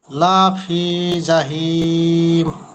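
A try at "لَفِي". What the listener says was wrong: এই যে লাফি লা টান হলো, এই টানটা হবে না। লাফি।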